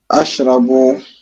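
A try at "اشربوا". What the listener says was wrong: limaza ashra, c'est i ou bien c'est ou? Ishrabu. Ishrab. Ishrabu. Ishrabu. Ishrabu al-qahwa. Washrabu al-qahwa.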